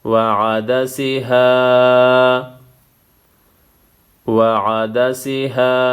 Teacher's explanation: الف مدہ ہے ایک الف کے مقدار کھینچنا ہے